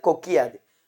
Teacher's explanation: முதல் சொல்லின் இறுதியில் உள்ள கு என்னும் எழுத்து கி என்று ஒலிக்கிறது முதல் சொல்லின் இறுதியில் இருக்கிற எழுத்து கூலிக்காமல் கின்னு ஒலிக்கிறது அதனால இதை குற்றியல் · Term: குற்றியல் லிகரம்